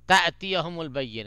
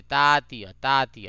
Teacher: دیکھیے یہ تأتیہ, یہ الف پہ نہیں, یہاں پہ جھٹکا نہیں ہے, سوری یہاں پہ حمزہ نہیں ہے لیکن اس کے اوپر جزم ہے. تو الف کے اوپر اگر جزم ہو تو وہاں بھی جھٹکا ہوتا ہے, جھٹکا دیا جاتا ہے تھوڑا سا